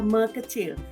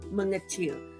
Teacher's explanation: Sepatutnya bunyinya ialah me kecil, tetapi kita menggugurkan bunyi sebenar konsonan K itu menjadi kepada nge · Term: pengguguran fonem konsonan